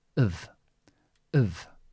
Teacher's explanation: it's not an F, it's a V, and we can make this sound weaker and use the schwa.